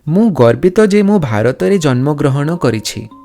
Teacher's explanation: Here in Odia, you consistently add Aw in the end of each word